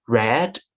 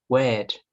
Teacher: We observed that when he says the R sound, he tends to say it as the W sound or the L sound. For example, when he says red, he would say it as wed.